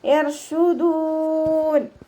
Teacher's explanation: ഷീൻ sound സീനിൻ്റെ സൗണ്ടായി പോകരുത് കേട്ടോ. ചിലരൊക്കെ ഓതുന്ന സമയത്ത് ഷീനിനും സീനിൻ്റെ സൗണ്ടാണ് കൊടുക്കുന്നത്, ശ്രദ്ധിക്കുക.